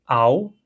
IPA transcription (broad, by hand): aw